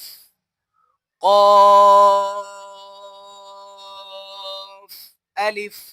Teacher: कौफ के ऊपर कलकला किया जाता है क्योंकि कफ हुरूफ कलकला में से है